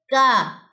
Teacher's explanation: यह जुबान की जड़ और उसके मुकाबिल तालू के नरम और सख्त दोनों हिस्सों से अदा होता है ये वाला काफ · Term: बारीक वाले काफ